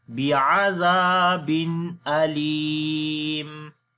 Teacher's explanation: Zal we read in soft sound and also we long due to alif madda. After the tanween, the next is hamza. We make izhar here.